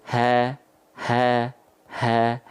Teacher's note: H besar itu keluar dari aqsal halqi, tenggorokan paling bawah